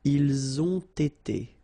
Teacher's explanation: You get first the liaison z, and then you get the t.